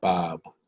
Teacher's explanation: know that's a hard b so that's called plosive you know when the air has to explode basically from uh from a hard stoppage to explosion so plosive so bob but that last being bob is kind